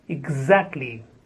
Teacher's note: The first syllable has ig, and then za. Exactly. Stress on the second syllable.